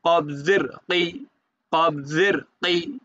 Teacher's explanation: জের ফি কফ কবজের কই কফটা একটু একটু হালকা মোটা করে যেহেতু মোটা হরফ কই ঠোঁটটা হালকা একটু গোল করে মোটা করবেন